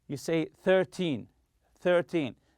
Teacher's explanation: When counting teen numbers such as 13 and 14, stress the first syllable.